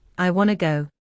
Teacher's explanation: we stress want and go, but to often becomes just to or disappears.